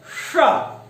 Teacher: जो जिह्वा नोक है वो थोड़ी सी पलट करके हमारी मूर्धा को स्पर्श करती है